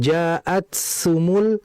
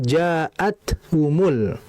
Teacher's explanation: Jadi dia langsung terputus karena ta ini sifatnya syiddah. Bukan rikhawa. Kalau rikhawa mengalir.